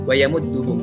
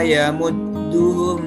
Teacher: Maka di sini tidak ada yang ditahan, hanya di dal ini ditahan karena memang ketika tasydid itu otomatis akan ditahan, tetapi tidak sampai 2 harakat